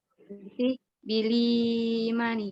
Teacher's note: kemudian mat badalnya i-nya dibaca dengan 6 harokat